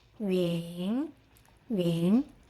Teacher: Starts with ü, lips rounded and forward, then end with n.